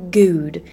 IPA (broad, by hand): guːd